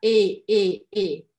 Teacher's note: ER ao final das palavras, eu não falo R, tá? Eu falo apenas a letra E bem aberta. E, ok? Se faire couper le.